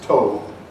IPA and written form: toʊ (tow)